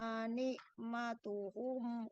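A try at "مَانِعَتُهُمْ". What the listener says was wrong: Bukan nikmatum, ni'atuhum, bukan. Ketinggalan tambahan ma.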